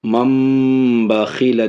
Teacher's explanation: نون کو میم سے بدل رہے ہیں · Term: اقلاب